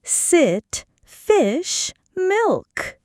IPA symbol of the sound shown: ɪ